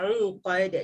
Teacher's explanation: Ainnya tu kena tekankan ya, uqad. Jangan baca fil uqad dan tidak jadi hamzah.